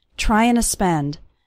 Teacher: the word to just becomes a little a sound at the end of trying